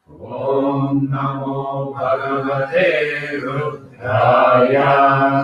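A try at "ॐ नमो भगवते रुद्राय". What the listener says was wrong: So when you say that after the day, that Ru should not come down. Dhraya, only Dhra should come down.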